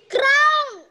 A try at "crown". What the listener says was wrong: It's not ka. Crown. Ka. Ka. Crown.